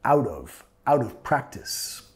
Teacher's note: Out of. Recordando con la R suave de español. Out of.